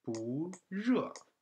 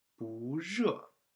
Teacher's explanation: when this one 不 combined with fourth tone, it changes into second tone